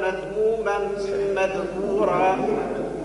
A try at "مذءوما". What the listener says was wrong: هو شخار؟ لا، مذؤوما. مذؤوب بالهمزة. بالهمزة مذؤوما مدحورا.